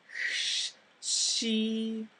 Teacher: comes from being so far forward in the mouth finally she it sounds kind of like an English English SH sound but your tongue is further forward closer to the teeth and so that C gets a little bit drawn out again